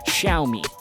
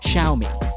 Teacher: you've got an X at the start of this brand, and usually Chinese pronouncers use that with an SH sound and with a bit of a Y after that